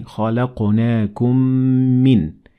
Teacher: The meme at the end of the word خَلَقْنَاكُمْ has sukun and is therefore merged with the meme of min. So we say خَلَقْنَاكُمْ مِن.